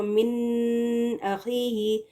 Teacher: اب جب نون ساکن یا تنوین کے بعد حروف حلقی میں سے کوئی حرف آ جائے، یعنی حمزہ عین غین خا اگر آ جائیں تو نون کی آواز کو کلیئرلی ادا کریں گے لیکن غنہ کے بغیر